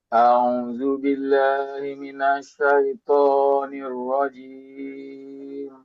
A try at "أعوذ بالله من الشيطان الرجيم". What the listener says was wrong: sudah mempraktekkan dengan baik, tetapi di awal terlalu terkesan terburu-buru gitu, Pak. A'udzu billahi minasyaitonir rajim.